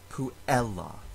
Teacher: In the last word on the list, the word puella has a short vowel in the second to last syllable, but it is a short vowel followed by two consonants, two L's. The two consonants make the syllable take a little bit longer to pronounce, so we can count the syllable as long, even though it has a short vowel. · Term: stress